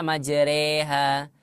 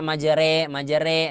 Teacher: sampaikan simpel saja ya imalah itu adalah ee merengnya harakat ya dia tidak ke fathah dia juga tidak ke kasrah tapi di antara keduanya